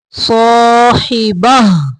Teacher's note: इस गोल ता को हा में पढ़ेंगे यानी वक़फ़ की सूरत में हा में पढ़ेंगे।